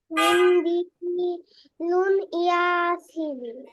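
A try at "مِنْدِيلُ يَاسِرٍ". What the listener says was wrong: এমন হবে না, যখন আমরা মিলাবো তখন আর দুই পেশ হতে পারবে না, এক পেশ হবে। মিন্দিলু ইয়াসিরিন।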